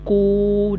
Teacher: Jadi panjang kat sini ku, dengan panjang dekat sini lu, bunyi panjang tu daripada rongga mulut al-jawfu.